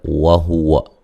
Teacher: واو کو ادا کرتے ہوئے ہونٹوں کو گول کرنا ہے